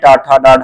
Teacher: टा ठ डाढ ये सब मुर्धा से उच्चारित होते हैं